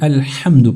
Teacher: وہ جو ہا ہوتا ہے وہ سینے کے پاس سے نکالا جاتا ہے۔ تو آپ نے اس کا خصوصی خیال رکھنا ہے کہ اس کو ہا کو اچھی طرح سے پڑھنا ہے۔ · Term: دو آنکھوں والا ہا